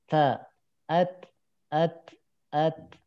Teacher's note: Nah, kalau ta itu harus ada udara. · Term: huruf ta